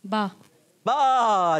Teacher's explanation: बा दोनों ओंठों के तर हिस्से से